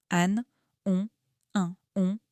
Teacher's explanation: L'air passe un peu par le nez, pas seulement par la bouche. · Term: les sons nasaux